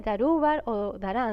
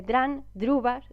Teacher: en la vida real no se oye darüber o daran, se oye directamente dran, drüber